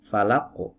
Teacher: Nah, jangan dikasih hamzah, falaq. Jadi dipantulkan biasa saja tanpa menutup pita suara.